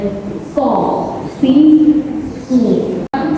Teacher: Nah, kemudian yang sin mirip dengan so, si, su, sama-sama di ujung lidah, hanya saja ketika mengucapkan so itu pangkal lidahnya ikut naik